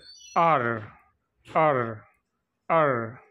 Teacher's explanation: tip of the tongue touches against the back of the teeth ridge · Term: పోస్ట్ అల్వ్యులర్